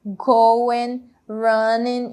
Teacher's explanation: Então, esses exemplos aqui foram de palavras que terminam com o ing, dois verbos aqui no gerúndio, né? Terminaram com o ing, porém a gente não pronuncia o G no final.